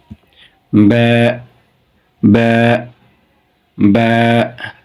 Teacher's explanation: উচ্চারণের স্থান ঠোঁটের ভিজা অংশ হতে